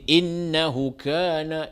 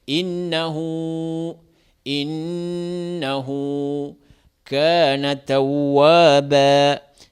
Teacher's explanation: il faut donner les prolongations pour les ha. Ils ont mis quelquefois le waouh à côté de ha.